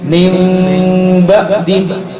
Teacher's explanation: kita tutup bibir kita, tapi tidak rapat, masih ada lubang sedikit. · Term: iklab